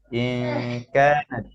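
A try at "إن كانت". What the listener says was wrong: ইনকা, গুন্নাটা কোথায়? ইনকা, ইনা, হ্যাঁ, ইনকা।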